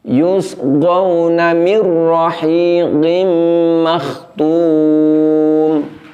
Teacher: getaran atau sifat at-taqrir pada huruf ro ini menjadi terlalu panjang semestinya ro itu diucapkan dengan menggetarkan ujung lidah · Karena kita menahan idgham bila hunahnya, bunyinya, maka di situ walaupun nun sukun telah diidghamkan ke huruf ro, namun yang terjadi adalah bunyi getaran atau sifat takrir pada huruf ro ini menjadi terlalu panjang. Semestinya ro itu diucapkan dengan menggetarkan ujung lidah, namun getarannya itu lembut dan pendek.